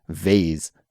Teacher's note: I say it vase with more of a Z sound, a buzzing sound.